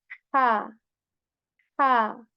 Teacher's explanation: I mentioned that this is a bit more airy than the H of English